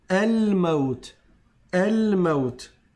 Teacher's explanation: c'est un alif qu'on prononce quand on commence la phrase avec ce mot-là. On commence à parler avec ce mot-là, on va dire el maout. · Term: hamz was